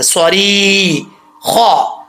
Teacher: خا حروف مستعلیہ میں سے ہے تو اس کو پر پڑھیں گے